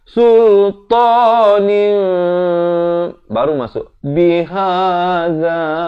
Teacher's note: Tapi bila bertemu ba, dia dah tak bunyi nin dah. Dia tukar daripada bunyi nun itu kepada bunyi mim, jadi nim.